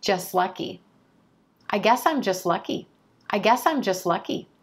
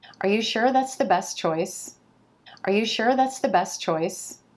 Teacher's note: that T sound is going to disappear when it comes between two consonant sounds even if that next consonant sound is at the beginning of the next word